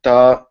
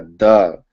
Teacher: da is a voiced sound because the vocal cords are engaged, whereas ta is an unvoiced sound because the vocal cords are not engaged